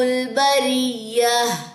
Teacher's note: تائے مربوطہ پہ زیر تھی، ڈراپ کی، دو نقطے ڈراپ کی، آخر میں ہا رہ گئی